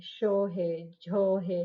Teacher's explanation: जैसे त थ द ध त थ द ध ठीक है तालू के साथ प्लेटल साउंड है